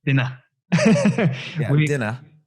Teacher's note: You don't say the R as much.